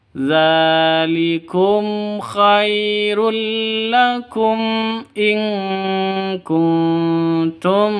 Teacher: Zalikum khairul lakum in kuntum. Mim mati bertemu dengan hamzah, jelas terang karena izhar safawi.